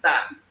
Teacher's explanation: Like the th sound, th, Tiap doesn't have it, so the Tiap person or the Tiap speaking person will pronounce th as ta instead of tha because it is absent in the language